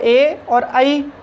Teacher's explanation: ए और आई कंठ से ध्वनि निकलती है, लेकिन जो हमारी जिह्वा है वो तालु को भी स्पर्श करती है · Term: कंठ तालु